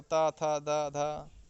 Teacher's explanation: और ता वर्ग जो उच्चारण स्थान होता है वो होता है दंत। ता वर्ग के जो वर्ण आते हैं उसका उच्चारण स्थान दंत होता है।